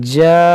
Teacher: नून मुशद्दद भी है तो इसमें गुन्ना भी करेंगे। इसमें भी बात लोग गलती करते हैं, जैसे देखें जन्ना, इस तरह से गुन्ना करें नून में।